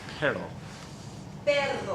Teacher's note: if you see a double R, you just hang on to that rolled R.